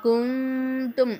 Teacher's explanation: இங்கே நம்ம குன்னா செய்கிறோம், நூனே சாக்கின் வந்திருக்கு.